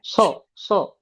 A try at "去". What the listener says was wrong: এটা স না, এটা এটা বলতে হবে, বলে না ছুঁইছি পানি, বলে ছুঁইছি পানি। হুম, ছি ছি বলো, ছি, ছি, ছি, ছি। অনেকে বলে না ছুঁইছি পানি, ছি ছি, তো এটা ছুঁই বলতে হবে, ছি ছি।